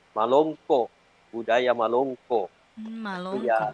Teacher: Jadi untuk kata Malongko, jadi ada glottal pada akhir kata.